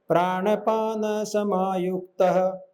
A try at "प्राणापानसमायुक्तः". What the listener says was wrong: तो इन्होंने मेलोडी एकदम परफेक्ट की, मगर एक दो जगह पे प्राण नहीं है, प्राणापान है, प्राणापान।